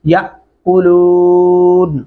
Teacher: अलिफ के ऊपर जब भी जज़म आती है वो हमजा की आवाज में पढ़ा जाता है झटके से